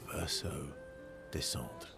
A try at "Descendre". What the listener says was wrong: Interesting how that's actually pronounced descendre. The RE falls off, so it's not descendre. It's just descendre. You just like make the D like a dr, let it fall off.